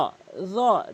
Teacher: র, জিব্বার আগাটি দাঁতের আগার সঙ্গে নর্মালি মিলিয়ে বলবেন। র, জ কখনোই বলবেন না, জ কখনোই বলা যাবে না, বলতে হবে র।